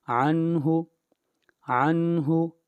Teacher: آگے چلیے عنہ، عنہ نہیں کرنا، عنہ، عنہ، یہاں پر اظہار ہوگا، نون ساکن کے بعد حروف حلقی میں سے ہا آ رہا ہے، اس لیے اظہار ہوگا